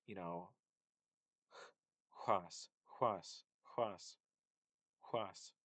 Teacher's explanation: So one way to look at this is that it's the ha ha, like in German Bach, but then with rounded lips